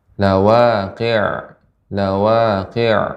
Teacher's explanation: sifat Ain adalah bainiah sedikit mengalir